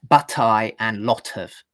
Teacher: connecting words like but, I, and lot of with a proper aspirated t